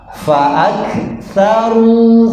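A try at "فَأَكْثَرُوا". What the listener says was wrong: ya coba ibu-ibu panjang ya ru-nya panjang ya mantap ya boleh diulangi sama-sama ya saru ya yang kompak ya ru-nya panjang ya bu ya coba diulangi lagi 1 2 3 ya hei pak sama-sama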